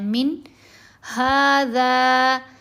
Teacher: हरूफ़े हल्की में से हा आ गया, यहाँ हमने इज़हार करना है, जल्दी पढ़ना है।